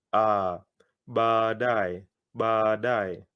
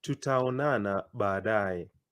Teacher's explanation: Anytime in Kiswahili you have double vowels, like these 2 A's, you prolong them.